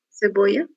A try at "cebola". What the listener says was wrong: Quase. A única diferença é a pronúncia final, que a gente escreve apenas com uma letra L. Será cebola.